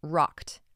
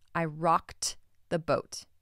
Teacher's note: rocked when spoken on its own has a t ending